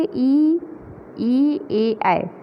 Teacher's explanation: अग्र से ई, ए, ऐ, ये जीभ के अग्रभाग से इनका उच्चारण होता है